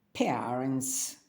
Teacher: дифтонг е це знову ж таки горловий звук який складається з двох частинок перша більш протяжна інша коротенька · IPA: [ɛə]